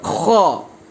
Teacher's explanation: Kalimat khair, kha-nya itu harus tebal banget, kha. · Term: tafkhim